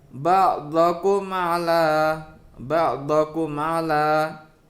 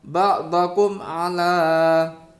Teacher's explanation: maka mim sukun harus dibaca dengan jelas tanpa disertai dengung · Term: idhar safawi